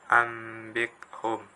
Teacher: Maka ketika ada nun mati atau tanwin bertemu dengan huruf ba, maka nun mati atau tanwin itu harus dibaca mim karena bacaan iqlab